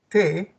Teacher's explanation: si pronuncias lentamente de T el ápice de la lengua se va a querer salir entre los dientes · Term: dentales